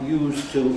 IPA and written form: ˋjuːztə (used to)